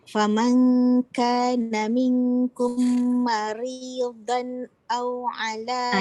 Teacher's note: Ma nipis, ri nipis, don tu baru tebal.